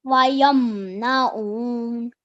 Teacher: I could hear the ayn from the middle of your throat now a bit. That was very nicely read, and then you did the waqf correctly as well.